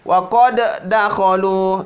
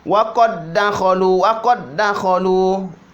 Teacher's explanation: Qalqalah dihilangkan. Wa qad dakhalu, langsung masuk di dal.